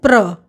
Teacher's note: जैसे प्राण में प्र के उच्चारण के लिए जब ओठ प के लिए मिले, उसी समय र कहने के लिए भी तैयार रहना चाहिए, ताकि दोनों का विस्फोट या उच्चारण एक साथ हो सके। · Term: संयुक्त ध्वनि